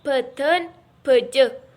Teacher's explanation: huruf BH merupakan kontoid plosif bilabial, bersuara dan beraspirasi.